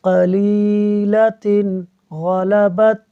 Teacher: غین حروف ہلکی میں سے ہے، اظہار ہوگا، غنہ نہیں کریں گے تو ہم پڑھیں گے قلیلتن غلبت، بغیر غنہ کے تنوین کا نون پڑھتے ہوئے، قلیلتن غلبت۔